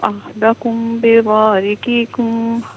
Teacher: احدکم میں میم ساکن پر غنہ کریں گے کیونکہ اس کے بعد با آ رہا ہے